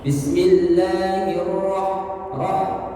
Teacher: Ha itu di tengah tenggorokan getarannya.